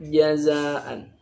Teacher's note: Ja, tempat keluarnya itu di tengah lidah dengan langit-langit mulut lurus di atasnya. Ja punya sifat yang tidak boleh disis, namanya al-jahru, jahr.